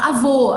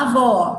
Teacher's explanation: do O fechado pro O aberto